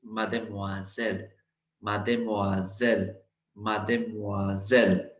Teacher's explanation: when single s is surrounded by two vowels it becomes z sound